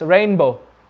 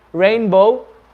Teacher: But when you say it very quickly, rainbow, the N sound, it's like it wants to become a M sound, because M is more closer to the B sound than the N.